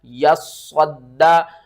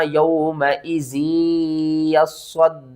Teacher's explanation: आपने स्वाद को मोटा करके पढ़ना है, स्वाद को 2 बार पढ़ना है, स्वाद को सख्ती के साथ पढ़ना है, स्वाद को दाल के साथ मिलाना है, फिर इस दाल को भी 2 बार पढ़ना है, या को भी 2 बार पढ़ना है।